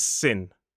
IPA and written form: sɪn (sin)